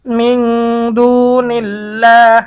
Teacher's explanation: আল্লাহ শব্দের ডানে জের থাকলে আল্লাহ শব্দের লামকে চিকন করতে হবে। এজন্য এখানে চিকন।